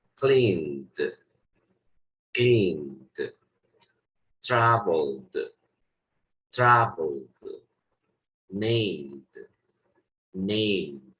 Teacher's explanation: Cuando tengas verbos que terminen en un sonido sonoro, el ED lo vas a pronunciar como una D. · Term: voiced sound